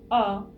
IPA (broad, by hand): ʌ